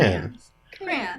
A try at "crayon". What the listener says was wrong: What happened to the Y and the O? And you just go like, yeah, just ignore the other letters in the middle.